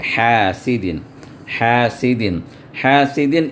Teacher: ہے نون ساکنہ کے بعد، ومن شر حاسد، اب ہا ہے، ہا جو ہے عین جہاں سے نکلتا ہے وسط حلق سے، وہیں پر ہا بھی وہیں سے نکلے گا